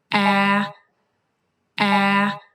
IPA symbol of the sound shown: æ